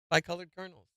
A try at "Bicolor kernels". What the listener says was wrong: No ed. Bicolor kernels.